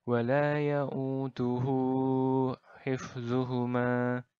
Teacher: cara membacanya adalah dengan dipanjangkan dua harokat saja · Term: Mad Silah qasirah